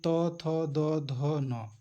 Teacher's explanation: इनका उच्चार स्थान क्या है दांत है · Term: त वर्ग